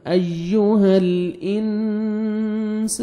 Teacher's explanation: نون ساکن کے بعد حروف اخفاء میں سے سین ہے، آپ نے نوز میں ساؤنڈ لے کے جانا ہے ، الف مدہ 1 سیکنڈ سین کو کھینچنا بھی ہے۔ یا